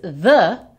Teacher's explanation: our voiced TH, which is the, sounds just like the Spanish D